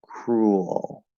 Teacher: we say with a little bit of like a schwa between the ooh and the ol, and it becomes an L colored schwa.